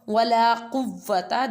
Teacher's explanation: qaf always pronounced with the thicker voice